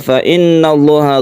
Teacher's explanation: gunnah musyaddada, nun tasydid yang kita panjangkan